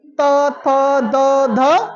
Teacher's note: दांत छू रहा ना, दांत, आपका जीभ आपके दांतों को टच कर रहा है